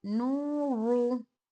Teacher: नू को बारीक, रू को मोटा करेंगे